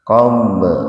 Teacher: Qomb qalqalah sugro, huruf ba mati di tengah-tengah kata, jadi dipantulkan tapi sedikit saja, ringan